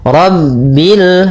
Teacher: Rabbil rnya tebal ro tafkhim.